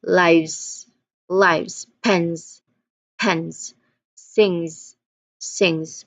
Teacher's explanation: ends in a voiced consonant sound where you do feel vibrations from your throat. Or if it ends in a vowel sounds then the suffix s is pronounced as z the buzzing the buzzing sound zz.